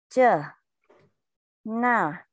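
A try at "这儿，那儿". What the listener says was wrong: Có cuốn lưỡi nha. Chờ, na.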